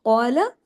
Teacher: قاف ہیوی، لام باریک، قاف 2 حرکت، لام 1 حرکت